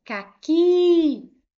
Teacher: Última sílaba foi a mais forte e ela é uma oxítona que terminou em i. · Porque eu tenho aqui uma palavra oxítona, caqui. Última sílaba foi a mais forte.